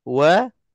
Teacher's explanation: semua berjaga-jaga dalam kita nak sebutkan waw supaya tak tertebal dan terpengaruh dengan huruf lam lafzul jalalah